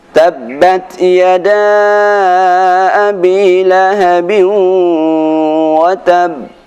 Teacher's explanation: ketika kita berhenti pada huruf qalqalah yang disertai dengan tasydid, maka cara membacanya qalqalah disertai jeda